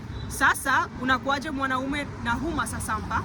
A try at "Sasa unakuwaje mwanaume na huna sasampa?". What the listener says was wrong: Huna. You keep on going to huma.